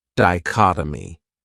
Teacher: this word has four syllables and the stress is on that second syllable dichotomy that third syllable has that schah that uh sound dichotomy